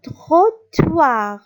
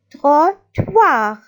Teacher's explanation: il y a une voyelle composée. O-I. Le O et le I بيقولوا wa.